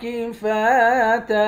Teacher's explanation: فا کے بعد الف ہے، ایک الف کی مقدار کھینچیں گے ، آخر میں دو زبر کی تنوین ہے، دو زبر کی